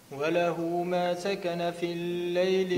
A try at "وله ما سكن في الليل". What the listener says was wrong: لا ما تشدش في اللام. في الليل مباشرة هكذا قول.